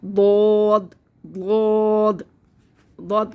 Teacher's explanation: ضاد کی ادائیگی یہی ہے کہ اس کی زبان اوپر کے تالو سے ڈھکے گی